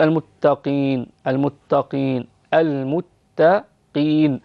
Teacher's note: والقاف في أدنى درجات التفخيم، لا تتكلفي تفخيمها فتقولي المتقين قي، لا، المتقين بهذا الشكل، اجعليها في أدنى مراتب التفخيم، تظهر كأنها رقيقة.